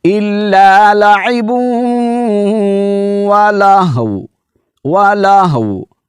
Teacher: جب وقف کریں گے تو واؤ کو ساکن کر کے پڑھیں گے۔